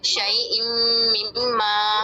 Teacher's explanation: ہم تنوین کی جو آواز ہے نون کی وہ مدغم کر دیں گے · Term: ادغام